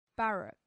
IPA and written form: ˈbærək (barrack)